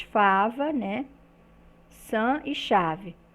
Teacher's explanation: já o som explicativos são produzidos por uma aproximação dos articuladores Então esse trato vocal ele vai se estreitar e o ar vai sair produzindo uma fricção